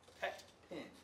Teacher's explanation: Pet and pin are pronounced with the same E sound.